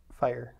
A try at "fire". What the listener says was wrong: You are saying it so fast, so it doesn't sound like you have two. Fire. That's what you're saying.